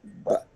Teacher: Dua bibir rapat atau tertutup ya. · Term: qalqalahnya